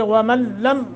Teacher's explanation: لام مشدد ہے اس لیے ومن لم ہم نے ادغام تو کیا ہے مگر بغیر غنہ